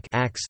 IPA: ax